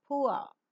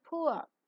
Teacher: the glide begins from back, rounded vowel, just above the half closed position, and moves towards the central and rounded vowel just above the half open position. The lips are rounded in the beginning and neutral later, while the glide is pronounced.